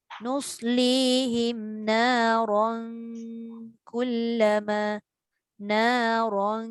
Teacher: kita dah fokus dekat tanwin bertemu kaf je, tapi kita lupa ra itu dibaca dengan tebal. Jadi kita nak baca jangan baca nuslihim naron. · Ra tebal. Tanwin bertemu kaf tu yang nipis.